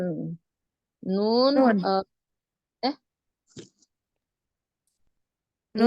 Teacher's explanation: Kalau nun itu dia ujung ya, ujung lidah bertemu dengan gusi atas.